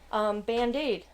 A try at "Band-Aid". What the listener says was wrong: No, you say Band-Aid, but it's a Band-Aid. She's putting the emphasis Emphasis on the wrong syllable.